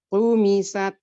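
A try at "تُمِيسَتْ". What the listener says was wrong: Nah, kurang nih, keluar udaranya nggak ada.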